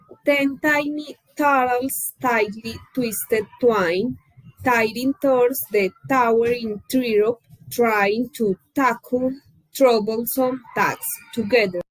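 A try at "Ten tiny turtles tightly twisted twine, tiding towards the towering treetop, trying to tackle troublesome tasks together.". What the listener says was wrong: Okay, first thing I noticed is she's not aspirating the T's very much. So she might be risking being understood as pronouncing D's instead of T's. That's a risk.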